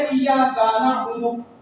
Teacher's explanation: جیسے ایاک نعبد, کاف ہے ہمیں اس کو جلدی سے پڑھنا ہے ایاک نعبد, لیکن ہم نے پڑھ دیا ایاک نعبد, تو کاف کے آگے ہم نے الف بنا دیا ایاک کا, اس کو کھینچ دیا